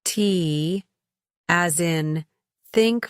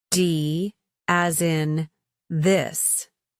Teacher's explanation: English has two types of thiath sounds: voiceless, t, as in think voiced, d, as in this. These sounds are produced by lightly placing the tongue between the teeth and allowing air to pass through.